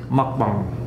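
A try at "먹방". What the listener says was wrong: Do the K but more silent.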